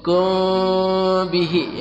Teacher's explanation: bertemu ba ikhfa syafawi, samar dan dengung, mulut dibuka sedikit